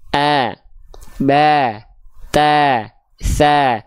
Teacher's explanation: kalau misalnya fathahnya yang keluar adalah vokal A kan berarti tipis nah fathah dengan kadar yang tipis itu buka mulutnya kita sertakan sambil senyum jadi Perhatikan Kalau vokal a dia agak senyum sedikit a ba